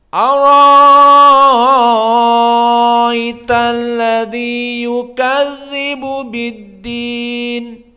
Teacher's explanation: Maka qiraah Wars yang pertama dia ibdalu hamzah bi alif ma'al mudud al-isba'.